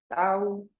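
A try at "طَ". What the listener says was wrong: Not, you see, you said tau, ta. No. To. Keep that aw heaviness, and it's a to. To. And don't go into your throat. Don't say ta'u. You when you instead of making things heavy by just making an aw sound, you're trying to make it heavy from your throat.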